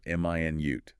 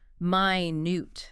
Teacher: Stress on the first syllable. M i nute. That's the unit of time 60 seconds.